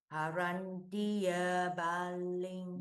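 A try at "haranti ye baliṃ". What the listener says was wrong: Ye, why is ye baling? Baling. BA is again short. Yes, baling. Yeah, E is long, so maybe ye baling.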